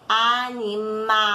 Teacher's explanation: a sílaba tônica, a sílaba mais forte, ocupa a última posição, ou seja, a sílaba tônica da palavra é a última.